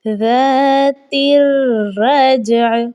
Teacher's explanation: را 2 مرتبہ پڑھا جائے گا کیونکہ اس پر تشدید ہے. 1 مرتبہ اپنے سے پہلے والے لفظ کی حرکت کے ساتھ، دوسری مرتبہ اپنی ذاتی حرکت کے ساتھ تشدید والا لفظ پڑھا جاتا ہے.